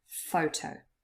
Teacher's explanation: photo consists of two syllables but only the first one is stressed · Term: word stress